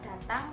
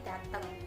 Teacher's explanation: Misalnya, pengucapan fonem A menjadi E. Contohnya saja pada kata datang menjadi dateng.